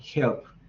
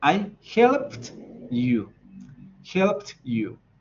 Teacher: But if we want to talk about the past, we need to exaggerate the final T.